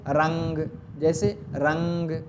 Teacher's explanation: ऐसा नून जिसकी आवाज नाक से थोड़ी सी निकलती है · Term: नून मु शब्बा गुन्ना